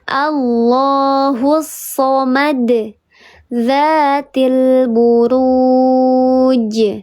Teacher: Pantulannya terdengar lebih besar daripada qalqalah yang sughra. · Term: qalqalah yang kubra